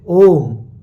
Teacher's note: ओम में तीन मात्रा काल का समय लगता है ओ बोलने में।